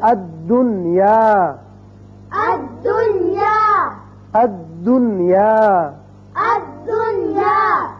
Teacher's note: نون کا اظہار ہوگا، اسی قاعدے کا نام اظہار مطلق ہے۔ جب اس کو پڑھیں گے الدنیا نہیں کریں گے بلکہ پڑھیں گے الدنیا، الدنیا، الدنیا، الدنیا، نون کا اظہار ہوگا۔